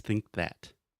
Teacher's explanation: That combination with think that, it's really hard because you have think and you have to make the k sound and then that immediately after